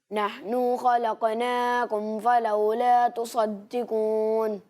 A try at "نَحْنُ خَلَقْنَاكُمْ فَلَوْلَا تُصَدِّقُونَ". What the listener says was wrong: اچھی کوشش کی آپ نے، لیکن ایک بات یہ کہ جہاں جتنا کھینچنا ہے، جسے جتنا کھینچنا ہے اتنا ہی کھینچیں، اس سے زیادہ نہیں کھینچنا، ٹھیک ہے؟